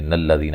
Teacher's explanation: ملا کے پڑھنا ہے تو نون کو لام سے ملا دیں گے، نلذین، یہ حمزہ وصلی گر جائے گا۔